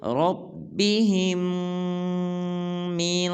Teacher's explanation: جب ہا کو میم مشدد کے ساتھ ملائیں گے تو غنہ کریں گے